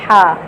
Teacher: ہا جو ہے یہ حلق کے درمیان والے حصے سے ادا ہو رہی ہے، یہ والی ہا جو جیم کے سامنے ہے، اس کو حلوے والی ہا بھی کہتے ہیں کیونکہ یہ حلوہ اس سے لکھا جاتا ہے نا۔